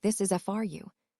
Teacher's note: It becomes fu or fr with barely any vowel.